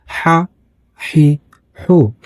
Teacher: When you pronounce Ha, air is very smoothly coming out of your mouth.